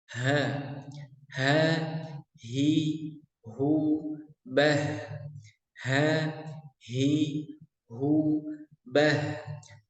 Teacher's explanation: H besar itu suaranya seperti ngebas. Posisi makhrajnya ada di tenggorokan paling bawah ya.